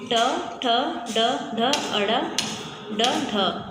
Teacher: ये मूर्धा से उच्चरित होते हैं, तो ये हमारे मूर्धन्य स्पर्श व्यंजन कहलाते हैं।